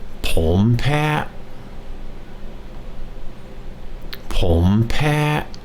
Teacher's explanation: ผมแพ้ผมแพ้ผมแพ้ ฉันแพ้ฉันแพ้ฉันแพ้ ผมแพ้ผมแพ้ผมแพ้ So what we have then is the word for I, which is depending on your sex, pom or chan. And the word for allergic is pat, high tone pat.